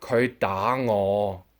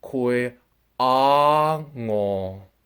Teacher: As you can tell from the video, she never says a D sound. She says kui a ngo.